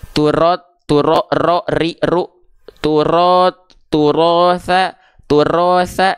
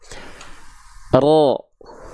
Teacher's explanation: dia getarannya sedikit aja enggak banyak-banyak Tapi tetap tegas dan lugas jelas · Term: takrir